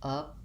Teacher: The word upper has first syllable stress, but it has a schwa, a stressed schwa.